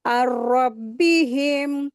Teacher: नून साकिन के बाद रा आया है, तो इदगाम हो रहा है यहाँ पर, अच्छे से अदा करेंगे और रा को हैवी करके रीडिंग करेंगे।